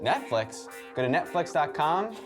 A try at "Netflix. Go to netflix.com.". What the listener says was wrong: Sounds like a question. Netflix? Go to netflix.com.